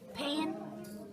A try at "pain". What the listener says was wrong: Pan is close, but what's the 2 letters in the middle? It's AI, so it makes that long A sound again. It's pain. Pain.